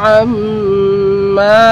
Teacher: আইন মিম জবর আম, মিম শব্দ ওয়াজিব গুন্না, তারপর মদ হবে, একালিফ লম্বা হবে। প্রথমে ওয়াজিব গুন্না, তারপর একালিফ লম্বা হবে। আইন মিম জবর আম, মিম আলিফ জবর মা, আম মা।